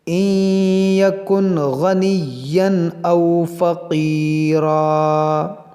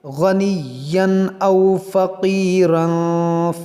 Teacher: تنوین کے بعد حمزہ ہے، یہاں پر اظہار کریں گے، یعنی غنہ یہاں پر نہیں ہوگا۔ یہاں تنوین کے بعد فا ہے تو یہاں پر غنہ کریں گے۔